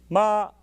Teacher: that sound begins with an attack, an ictus. Ma! And ends in a descending glide.